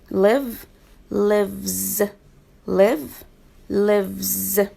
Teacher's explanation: when i add s to the word live i pronounce the letter s z